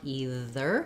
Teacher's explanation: we want this actually not to have a z sound but a th sound either so make sure that you're saying a th your question